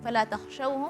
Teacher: Jadi harful kha itu memang dia bagian tenggorokan paling atas, tapi tidak boleh yang gitu enggak, dia agak Ngorok banget. · harful kha dia memiliki sifat rakhawah atau lentur